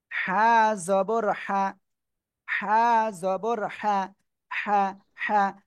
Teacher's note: গলাটা চেপে মুখ দিয়ে হালকা বাতাস বের করতে হবে